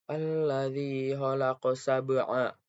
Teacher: Selanjutnya, alladzi khalaqa sab'a. Nah, pada sab'a itu terdapat qalqalah sugro karena ada salah satu qalqalah yaitu ba sukun dan sukunnya adalah asli, maka cara baca dipantulkan dan pantulannya kecil